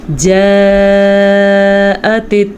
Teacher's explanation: جاءت کی جو مد ہے ہم نے 5 الف کے برابر لمبی کی